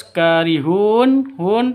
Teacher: Hun Panjang boleh dua boleh empat boleh enam ketukan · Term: Mad Arid lisukun